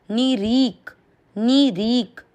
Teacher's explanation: नी और नी की मात्रा छोटी है तो इसको आपको लंबा नहीं खींचना। री की मात्रा बड़ी है, लंबा खींचते हुए आधे क को साथ में पढ़ना है। नी रीक। देखिए, नी को जितना समय दिया और री को उससे ज़्यादा दिया क्योंकि बड़ी मात्रा है।